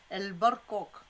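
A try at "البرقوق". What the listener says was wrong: Très bien. Même si tu n'as pas prononcé le K, ça se comprend ici.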